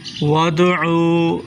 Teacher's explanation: وادعوا دال کو مشدد کر کے پڑھیں، عین کو حلق سے نکالیں